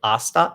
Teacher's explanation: the h is silent in spanish it's a silent letter so we never pronounce it